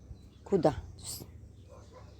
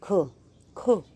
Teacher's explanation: ये हमारा कंठ से गले से निकलता है,